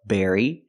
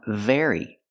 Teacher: They almost sound the same. The B makes a closed sound, berry, and the V makes a vibration sound, very.